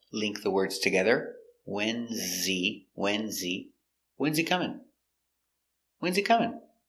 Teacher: when is contraction WS WS stress on the important word wns he is not important so the H is silent link the words together